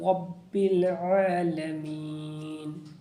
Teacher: رب کو یہاں پر را کو پر پڑھیں گے